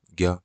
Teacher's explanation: ज्ञ बोलोगे तो ज और य आता है। ज्ञ तो ज और य का उच्चारण हो रहा है।